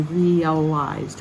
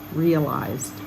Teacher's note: The same R-E-A, but this time we say realized. We separate the two vowels into different syllables.